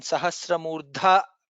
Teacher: Dha is Mahaprana there.